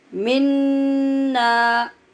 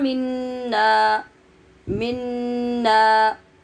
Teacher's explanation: ایک تو منا گول نون نہیں پڑھنا، دوسرے نون کو غننے کے بغیر نہیں پڑھنا